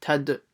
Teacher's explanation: Make sure to try to do a bouncing sound on the dal